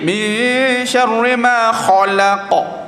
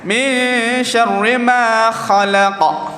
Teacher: Tapi kalau kita muncung buat dalam 60% jadi kha. Huruf kha ni dia panggil tebal, tak berat. Kalau berat dia jadi min syarri ma khalaqa.